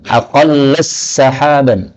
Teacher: Ini boleh idgham. Jadi taknya berubah jadi sin.